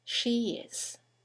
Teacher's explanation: there's a semi-vowel y that links the vowel at the end of she to the vowel at the beginning of is